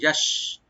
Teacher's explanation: শিনের মাখরাজ হলো জিহ্বার মাঝখান, তার উপর তালু,